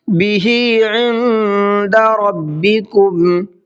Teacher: عند کے نون کے اندر اخفا کریں گے، اس لیے کہ یہاں پر بھی نون ساکن کے بعد میں دال ہے، اور ربکم کا را کو مبر کے پڑھنا ہے۔